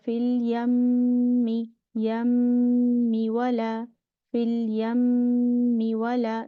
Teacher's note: when the noon and the meme has shadda, we make complete akmal gunna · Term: most complete gunna